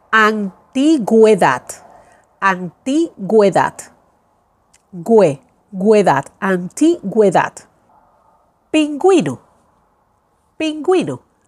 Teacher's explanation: I'm pronouncing now the vowel U, la vocal U, because of the dieresis.